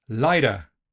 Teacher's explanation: Tapping the t will give us lighter, which sounds American or Australian. It's like a very fast d